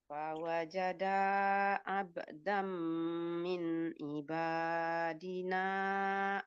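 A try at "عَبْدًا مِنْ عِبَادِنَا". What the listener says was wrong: Ainnya ainnya kurang masuk ke dalam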